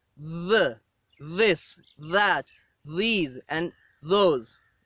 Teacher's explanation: so in these sounds the air is not completely blocked okay the air passage is not completely blocked there is a partial closure again and the air passes with vibration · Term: dental fricatives